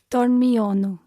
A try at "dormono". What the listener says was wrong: We actually lose the I from the infinitive, so the verb is not dormiono, but dormono.